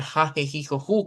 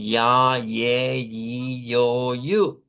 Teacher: Aquí debemos ir con un sonido como ya, ye, yo, yu. Ese es el sonido y es también en el palato la ubicación